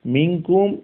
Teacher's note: দুই হরকত পরিমাণ গুন্নার প্রতি লক্ষ্য রেখে ইজহার এবং ইদগামের মাঝামাঝি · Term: ইখফা